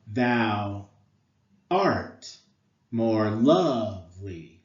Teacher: the foot is made up of an unstressed syllable followed by a stressed syllable